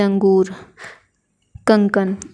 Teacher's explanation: जिन वर्ण के उच्चारण में हवा जो होती है वो केवल नाक से निकलती है उन्हें अनुस्वार बोलते हैं